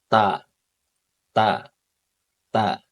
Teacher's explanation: Akhirnya nanti ujung lidah kita itu akan terasa menyentuh sedikit ke gusi dan juga menyentuh sedikit ke dua gigi seri bagian atasnya. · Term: huruf ta